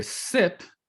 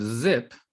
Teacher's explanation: since there might be some trouble hearing zzz, you might hear sip instead of zip